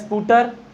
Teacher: ई की ध्वनि अनायास ही उत्पन्न होती जा रही है